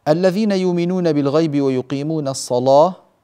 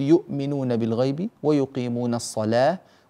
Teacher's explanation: ويرقق اللام من كلمة الصلاة